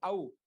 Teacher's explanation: కంఠంతో పాటు కొంచెం ఓష్ట స్థానం వచ్చింది. కాబట్టి ఈ వర్ణంలో కనీసం కంఠంతో పాటు కొంచెం ఓష్ట స్థానం, కొంచెం ఒక స్థానం అయితే కలిసింది. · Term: కంఠ్యోష్టౌ